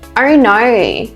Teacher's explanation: Oh no, with a more of an R sound at the end. That's a drawn out vowel sound.